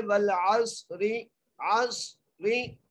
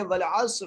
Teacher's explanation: यहाँ पर वक़फ़ की सूरत में हम क्या कर रहे हैं? रा को साकिन कर रहे हैं, वल अस्र पढ़ रहे हैं।